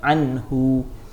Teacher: Tak ada konsep dengung, dia jelas dan nyata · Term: izhar halqi